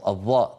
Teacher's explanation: تجد بأن الصوت محصور بين قبة الحنك واللسان. أيضا الصوت محصور بين قبة الحنك واللسان.